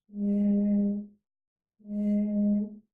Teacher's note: we block air from coming out of our mouth, but we release the air through our nose. So air comes out of the nose, it does not come out of the mouth. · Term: nasal sound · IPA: /n/